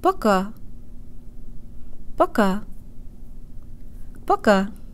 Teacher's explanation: booka make sure the first syllable is shorter and de-emphasized and tell your brain that here the ohh sounds like a schwa sound with an AA flavor · Jaw slightly more forward than when we speak English, tip of the tongue behind the bottom teeth, anchored at the gum line as much as possible, and lips rounded and protruded. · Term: new default mouth position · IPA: pɐˈka